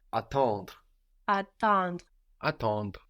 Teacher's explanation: we have the em in the middle that gives us a nasal sound